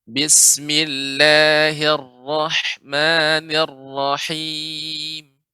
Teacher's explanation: Huruf ra ini tidak terlalu banyak getarannya.